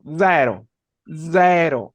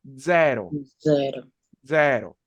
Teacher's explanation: cuando las palabras comienzan por Z el sonido es un poco de zumbido muy parecido al inglés